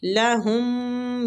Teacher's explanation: میم مشدد ہے، میم پہ غنہ کریں گے